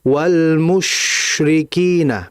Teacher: Sehingga ketika mengucapkan huruf shin, mimnya dimonyongkan karena dhamma, kemudian kembalikan bibirnya itu ke netral dan alirkan shin di situ. Agar aliran shinnya jelas, ya.